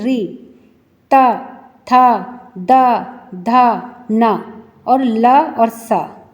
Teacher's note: आपकी जो जीव है वह दांतों के पिछले भाग से स्पर्श करती हुई आपको महसूस होती है · ये दंतः वर्णा कहलाते हैं, क्योंकि इसमें हमारी जीभ दांतों के पिछले हिस्से से स्पर्श करती है